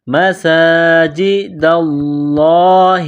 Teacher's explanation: لفظ اللہ کے نام سے پہلے زبر ہے تو لفظ اللہ کے نام کو موٹا کرنا ہے